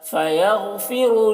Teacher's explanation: غین کو پر پڑھیں گے، غین حروف مستعلیہ میں سے ہے۔